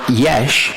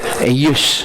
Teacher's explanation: in Greek, there's no sh sound. It's only a hard S. So from Yesh, you go to Eyus.